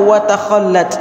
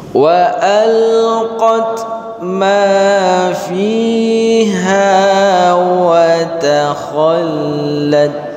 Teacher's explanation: ta dibaca tipis, kha dibaca tebal, lam dibaca tipis, ta dibaca tipis lagi. Jadi jangan ditipiskan semua atau ditebalkan semua, karena sebahagian karena kha ini huruf tebal maka dia mempengaruhi huruf lain.